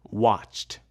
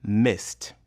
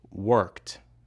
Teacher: In these verbs, the ed ending is pronounced t.